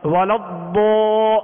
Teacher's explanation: تو یہ آواز ضاد کی جب ہوتی ہے اور اس کے بعد جب مد کی جاتی ہے تو وہ مد کی آواز بھی پر ہوتی ہے، کیونکہ الف مدہ ہے اور الف سے پہلے والا حرف ضاد ہے حروف مستعلیہ میں سے، لہذا الف کو پر ہی پڑھیں گے۔